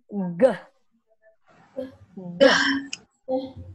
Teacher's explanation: Bagian belakang lidah kita naik ke atas.